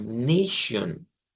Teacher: En el inglés cambia la A por un sonido EI. Esa T-I-O-N en el inglés equivale a un shion, una SH, una ishba, un shua, digamos en el inglés, y una N.